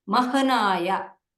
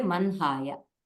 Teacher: when ha is followed by na sound or ma sound, we will say the nasal sound first followed by ha. Actually in the script you will see mahanaya, but when you are saying it, it will be manhaya.